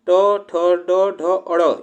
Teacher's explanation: ट, ठ, ड, ढ, अड़, यह जो हमारे मूर्धा से उच्चारण होते हैं